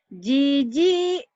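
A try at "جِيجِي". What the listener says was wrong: Ketahan masih. Dilemesin ya.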